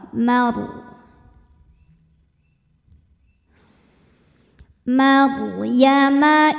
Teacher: ro sukun dibaca secara tafkhim karena sebelum ro sukunnya didahului harakat fathah maka dibaca dengan tebal